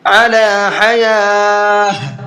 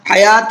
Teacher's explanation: علی حیاۃ، یہاں پر دیکھیے علامت وقف ہے اور جو ہم نے وقف کیا ہے وہ گولتا پر کیا ہے، اور گولتا پر جب وقف کرتے ہیں تو گولتا ہا بن جاتی ہے